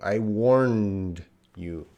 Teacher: N is the voiced nasal.